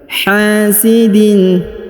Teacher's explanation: Huruf ha dibaca panjang 2 harokat karena di depannya terdapat alif.